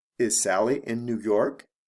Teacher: with the question, my intonation goes up at the end of the question for these types